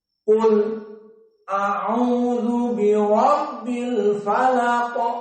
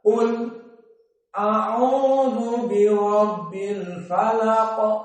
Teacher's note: As-saqt berhenti sebentar di lam, baru setelah itu masuk kepada hamzah.